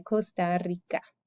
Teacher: and espanol we roll that r